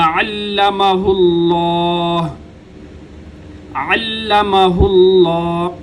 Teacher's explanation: لفظ اللہ کا لام موٹا ہوگا کیونکہ ماقبل ہا کے اوپر پیش ہے، پیش ہوگی تو موٹا ہوگا، زبر ہوگی تو تب بھی موٹا ہوگا، زیر ہوگی تو باریک ہوگا۔